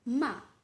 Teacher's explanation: the falling tone imagine the tone of your voice when you say an order such as stop